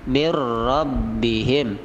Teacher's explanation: nun mati bertemu ra, idgham bila gunnah